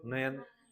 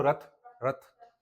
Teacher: यह वह ध्वनियां हैं जो जीभ और मसूड़ों के बीच स्पर्श से बनती हैं।